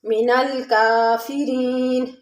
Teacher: فیرین میں یا ساکن اس سے پہلے زیر یا مدہ ہے، تھوڑا سے کھینچ کے پڑھیں گے۔